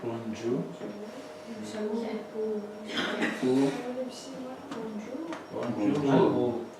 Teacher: The ra drops kinda, and then two U's get together. It's kinda merger.